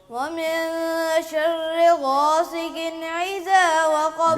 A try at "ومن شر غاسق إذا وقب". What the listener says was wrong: بیٹے آپ کی یہ مسٹیک جو نا حمزہ اور عین کی جو ہو رہی ہے یہ غلط ہے.